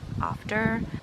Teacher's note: it is non-rhotic, which means that we do not pronounce R's after a vowel. Like in the word after, even though the R is in the word, we don't pronounce it like in after.